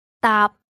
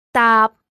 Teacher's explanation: remember that it ends with a glottal P so the ending sounds just like the English word tap.